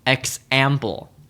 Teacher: the word example stresses the middle syllable